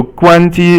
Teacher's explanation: 关 机 is all first tone, as you can hear